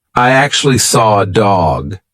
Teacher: I can't see an R but I said an r and that is because we have a feature called an intrusive R